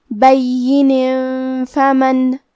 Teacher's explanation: فا حروف الاخفاء میں سے ہے، تو ہم یہ حکم کو غنہ کے ساتھ ادا کریں گے۔